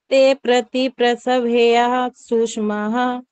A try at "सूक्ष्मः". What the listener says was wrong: सूक्ष्मा नहीं सूक्ष्मः